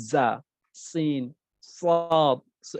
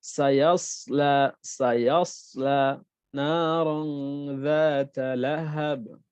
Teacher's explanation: এই 3টি হরফ যখন আমরা উচ্চারণ করি তখন এটার সাউন্ড আসে এরকম, চড়ুই পাখি যে আওয়াজটা করে, হ্যাঁ, এরকম একটা সাউন্ড আসে, এই আর কি। এই হরফগুলো উচ্চারণের সময় চড়ুই পাখির মতো আওয়াজ করতে হয় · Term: সফির